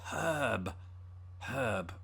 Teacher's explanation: we don't pronounce the r in in herb as Brits